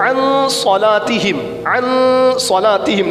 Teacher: نون ساکن کے بعد حرف اخفا میں سے صاد آ گیا، یہاں پہ اخفا کا قاعدہ غنہ کریں گے